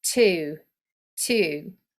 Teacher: in irish it's a diphthong two it's actually a triphthong